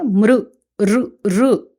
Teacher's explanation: అంతేగాని మృ అని ఉకారం పలకూడదు